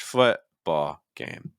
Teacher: Notice that everything goes down in pitch.